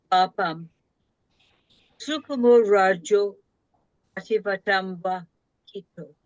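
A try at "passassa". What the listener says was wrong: Again, you under the influence of English phonetic, you shorten that O. So Sassa. Give the full long vowel Sassa. Ah, and not the Z. Sassa. Remember, neither Sanskrit nor Pali has a Z sound.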